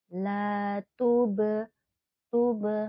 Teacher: ba termasuk huruf Qalqalah ya maka dibacanya harus memantul